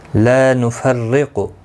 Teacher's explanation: لا الف مدہ ہے، ایک الف کی مقدار کے برابر کھینچ کر پڑھیں گے۔ نفرق، اور زیر کی وجہ سے باریک پڑھا جائے گا، قاف مستعلیہ ہے، پر پڑھا جائے گا۔